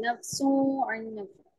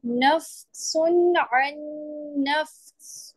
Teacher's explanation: ظاہر کر کے پڑھیں گے کیونکہ حروف حلقی ہے